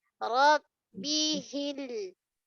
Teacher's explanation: Ro tebal, ba syiddah. Tahan suara. Jangan rom mengalir tak nak.